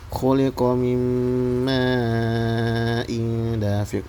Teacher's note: Di sini pertama terdapat hukum nun mati bertemu huruf mim, yaitu idgham bi gunnah, yaitu huruf mim, maka dia didengungkan.